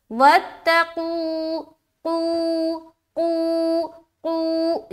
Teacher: कितना खींचते हैं, खींचने की मकदार क्या है, वो है 1 अलिफ। एक मकदार जो है मुतय्यन है कि इतना ही हमें खींचना है। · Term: वाव मद्दा